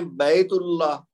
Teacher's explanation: اللہ کا حمزہ نہیں پڑھا گیا کیونکہ یہ حمزۃ الوصل ہے، تو لہٰذا ملا کے پڑھنے کی صورت میں وہ اس کی آواز نہیں آئے گی۔